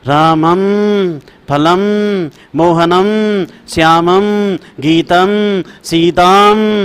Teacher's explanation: इस बिंदी का उच्चारण करने में नाक से ही ध्वनि निकलेगी, मुंह की शटर बंद और नाक चालू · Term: अनुस्वार